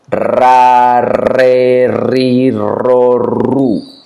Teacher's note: The tongue goes to the edge of the palate, right where the tooth start, and vibrate, touching the palate. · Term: strong sound